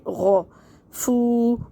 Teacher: فا میں ہمس کریں گے، ہوا کی شور کی آواز آئے گی